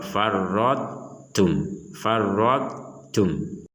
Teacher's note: huruf ta dimasukkan kepada huruf ta tapi tidak sempurna dan ditandai dengan huruf ta-nya ini tidak ada tasdid. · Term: idgham nakis